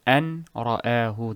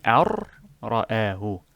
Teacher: You remove the noon completely in enunciation, of course, and place the ra as if the noon is removed and the entire second word is attached to the alif here.